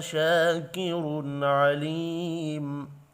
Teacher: تنوین کے بعد عین ہے، اظہار حلقی ہوگا، غنہ نہیں ہوگا